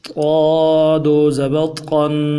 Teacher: قا کو موٹا پڑھیں گے، اور زبان کا بیچ اٹھائیں گے خاص طور پہ موٹا کرنے کے لیے، تھوڑا سا جماؤ کے ساتھ پڑھیں گے۔